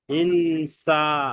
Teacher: নুন সাকিনের পরে সিন এসছে গুনা হবে